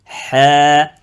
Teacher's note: lettre Ha, c'est milieu de la gorge. Et elle est amincie. Il ne faut pas dire Ha.